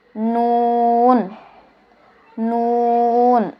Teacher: জিহ্বার আগা তার বরাবর উপরের তালুর সঙ্গে লাগিয়ে